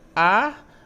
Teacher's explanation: É uma oxítona, porque a última sílaba é a mais forte